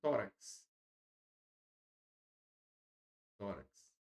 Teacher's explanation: aqueles grupos de palavras que possuem a penúltima, tá? Penúltima sílaba tônica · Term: paroxítona